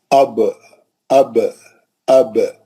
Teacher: ہونٹ کا آدھا حصہ جو باہر رہتا وہ سوکھا رہتا. با جو ہے ہونٹوں کے گیلے حصے کو لگانے سے ہے نا نکلتا ہے با